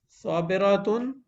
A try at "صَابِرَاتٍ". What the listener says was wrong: ایک الف کھینچیں. صابراتن تو ایسا لگ رہا ہے واحد پڑھ رہے ہیں آپ.